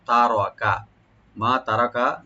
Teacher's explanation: এখানে তা ওপেন থাকবে আর র একটু ডিপ হবে আর কাপটাকে ওপেন করে পড়তে হবে